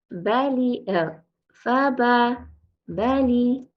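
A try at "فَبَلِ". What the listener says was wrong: This ba changed a little bit. So let's try fa, bali. Remember, keep concentrating on the ba sound, rhyming it with the fa. Sometimes it could be two reasons. Sometimes what happens is when people say ba, their tongue at the back is shifting. I don't think it's that with you.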